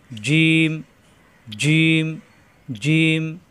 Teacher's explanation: এই হরফটা জিম, জিহ্বার মাঝখান, উপরে তালুতে চাপ দিয়ে উচ্চারণ করতে হবে।